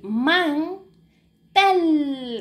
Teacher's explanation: Aquí hacemos el acento la fuerza de voz verdad en tel